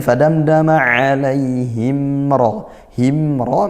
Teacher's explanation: Kemudian fadamdama alaihim ra, him ra, mim sukun bertemu huruf ra, sama juga izhar syafawi seperti tadi karena dia tidak bertemu mim, tidak bertemu ba, maka dibaca jelas izhar, sempurnakan sifat huruf asli mim, yaitu dibaca bainiyah, ngalir tapi sedang saja, ngalir sedang, tidak perlu ngalir lepas gitu.